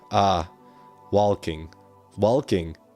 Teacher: It's an open A. It's a long A.